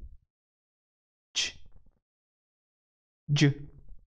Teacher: It begins as a stop and releases as a fricative. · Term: affricate